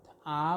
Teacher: অন্যদিকে একেবারে শেষের দিকে যদি আমরা ধরি নিম্ন স্বরধ্বনি আকে, স্থানের দিক থেকে একে বিবৃত স্বরধ্বনি বলে। অর্থাৎ আ উচ্চারণের সময় মুখ বিবর সম্পূর্ণভাবে বিবৃত হয়, খুলে যায়। আ যত দূর পর্যন্ত একেবারে ফাঁকা করে উচ্চারণ করা হয়, এই কারণে একে বিবৃত স্বরধ্বনি বলা হচ্ছে।